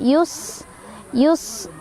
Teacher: Sinnya tadi punya sifat hames, ada angin keluar, dan sofir ada desisan seperti suara ular.